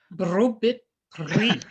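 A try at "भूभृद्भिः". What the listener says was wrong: No aspirations. Bhubhridbhih. Bhubhridbhih. Bhubhridbhih. That requires so much aspiration. bhubhrid and then bhihi. Bhubhrid bhihi. Bhubhrid bhihi.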